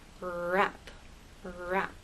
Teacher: with rap, Your tongue never touches the bump. It never touches any part of the roof of your mouth. It comes close, but it doesn't touch.